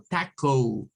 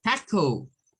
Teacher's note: Muy mexicana, taco, un taco, no lo dicen como co, sino que lo dicen como taco, porque de acuerdo a lo que ellos han estudiado, esta O, por la posición en la que está, debes tener un sonido largo